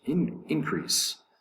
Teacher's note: Increase is 2 syllables. The accent is over the first syllable.